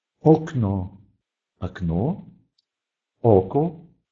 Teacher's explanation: Независимо от того, стоит ли этот звук под ударением или не под ударением, он должен четко произноситься как «о». Например, окно, око, окно, окно, око, глаз.